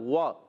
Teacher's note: واو کی ادائیگی ہوتی ہے ہمیشہ ہونٹوں کی گولائی سے، دونوں ہونٹ گول کرتے ہیں تو ادا ہوتا ہے واو